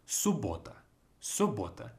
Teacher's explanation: we pronounce it as just simply as if it's one B